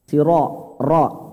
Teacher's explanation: siro, roknya tebal Pak ya, karena berharokat fathah.